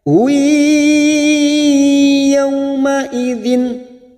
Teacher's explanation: Wa wujuhu hadamir yang berharokat duma tanwin bertemu ya idgham bi gunnah. Masuk ke huruf ya.